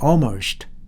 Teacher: 중간에 나오면은 dark L 아주 말하자면은 어둡게 소리 나는 L예요. 그래서 거의 소리가 안 나게 들려요